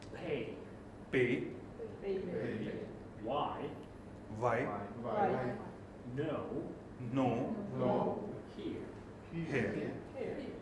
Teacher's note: diphthongs, which are vowel sounds with two different targets linked together. Will often, though not every time, lose the second target.